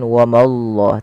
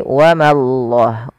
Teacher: Ma tipis Allahnya tebal